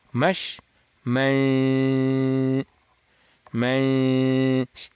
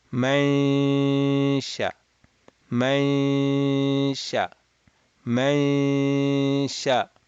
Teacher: My tongue is at the sheen makhraj when I'm doing the nasal sound.